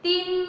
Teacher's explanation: Tim 3 harokat ditahan, dengung masuk ke hidung, maksudnya dengung itu. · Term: idgham bi gunnah